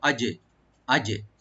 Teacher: জিমে একটু কলকলা করতে হবে, একটু হালকা আমরা ইকু করব